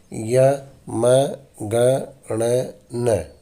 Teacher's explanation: जिह्वा की सहायता से नासिका से चूंकि इनका उच्चारण होता है, इसलिए इन्हें नासिक्य वर्ण भी कहा जाता है।